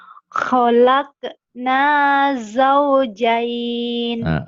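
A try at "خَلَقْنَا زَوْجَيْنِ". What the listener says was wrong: Bagus tuh. Khalaqna zaujain. Terutama di za ini. Zaujain.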